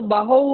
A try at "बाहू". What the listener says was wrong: बाहु, इसमें दीर्घ ऊ आ जाता है, बाहु बाहु बाहु बाहु। ऐसे होता है। हाँ, उस समय बात हुई थी कि बड़ा हुआ आएगा, दीर्घ हुआ आएगा, पुष्टौ बाहु।